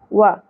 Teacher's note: واو کے اوپر ایک ہی زبر ہے، سنگل حرکت ہے، تو اس لیے ہم اس کو زیادہ نہیں کھینچیں گے۔